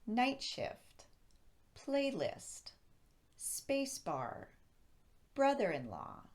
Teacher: the first word should receive the most emphasis we do this by raising our pitch on that first word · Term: compound nouns